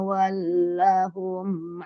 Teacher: lamnya panjang dua harakat